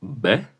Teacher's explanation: Los dos labios se juntan a la hora de pronunciarlo. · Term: B labial